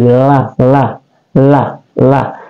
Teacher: berikut ada lam lam itu dia adalah huruf khatul lisan atau keluar di tepi lidah tepi lidah atau tepi lidah kanan atau tepi lidah kiri kita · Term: khafatul lisan